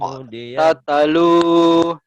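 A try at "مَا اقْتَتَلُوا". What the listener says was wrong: maqtatalu di rem ya, jangan tatalu.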